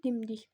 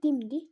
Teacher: Bu da vurğuya görə dəyişir də. Düzdür birincidə vurğu əvvəldə oldu. Birinci hecada, sonra ikinci hecada.